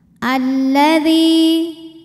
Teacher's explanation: mad tabi'i dhahiri karena ada ya sukun didahului harokat kasrah, maka dzal panjang 2 harokat · Lam yang pertama tidak dibaca, maka ini disebut dengan idgham syamsi